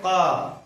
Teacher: क का उच्चारण स्थान आपका कंठ हो जाता है